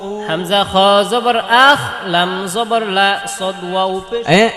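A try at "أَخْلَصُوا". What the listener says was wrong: লাম জবর লা আখ লা বলতে হবে পরে সদ ওয়াও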